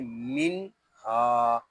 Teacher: اس کو من اس طرح نہیں پڑھیں گے، اس کو پڑھیں گے من ہا۔ ہا کو ایک الف تک کھینچ کر پڑھیں گے کیونکہ یہاں الف مدہ ہو رہا ہے